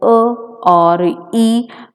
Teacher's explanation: a or e, the lips are unrounded, so these vowels are the unrounded vowel. So one label is given depending upon the position of the lips.